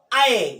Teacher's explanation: जो अ है वो अर्धविवृत होगा, क्योंकि इसमें मुख खुलता है लेकिन कम। देखो अ यानी खुलता है लेकिन कम, आधा, तो अर्धविवृत होगा।